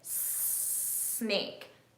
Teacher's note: I can feel air coming out and my vocal cords aren't doing anything, okay? So S is unvoiced, but then Z, Z.